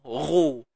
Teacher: Muncung bibir bukan sebab dia tebal, tapi sebab dia baris depan.